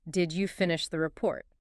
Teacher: That upward curve signals I expect a yes or no.